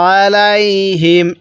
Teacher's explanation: আইনটা গলার মধ্যে চাপ দিয়ে পড়লে আইনটা সহি উচ্চারণ হবে